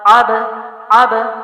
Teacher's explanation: محمدن، آب جو ہے، با جو ہے وہ جزم والا ہے اور عین کے زبر کے ساتھ، عین کے ساتھ با کو ملائیں گے اور با کو کلکلا کریں گے، یعنی اس کے مخرج میں حرکت پیدا کریں